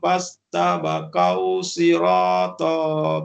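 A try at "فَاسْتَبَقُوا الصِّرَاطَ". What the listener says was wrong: Masuk huruf sad. Masuk huruf sad.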